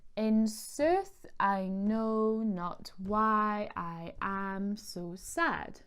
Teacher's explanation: one unstressed syllable followed by a stressed syllable with a total of 10 syllables in a line, and you can hear that when you read it aloud. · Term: iambic pentameter